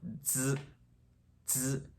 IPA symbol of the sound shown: z